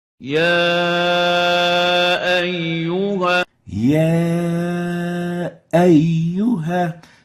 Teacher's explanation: You're almost not hearing the Hamza, as if the A vowel is extending to the Ya vowel. Ya ayyuha. The right way of pronouncing it is, as we're going to hear from Sheikh Al-Husari, يا أيها Ya ayyuha.